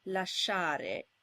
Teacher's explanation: The sh sound is a long sound, so when it's in the middle of a word, it needs to be doubled in the IPA transcription, as in lasciare.